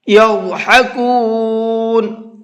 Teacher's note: ضاد کو پر کر کے منہ بھر کے پڑھیں گے